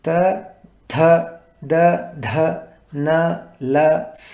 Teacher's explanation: తర్వాత త థ ద ధ న ల స అనే అక్షరాలు దంతాల నుంచి అంటే ముందు పళ్ళ వెనుక ఉండే ఎత్తుకి నాలుక కొన తగలగా పలకబడేటివి